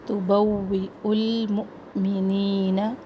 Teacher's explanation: واو کے اوپر حمزہ ہے تو یہاں پہ ہم نے جھٹکا دینا ہے